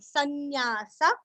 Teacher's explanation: सन अनुस्वार का उच्चारण हल्का सा न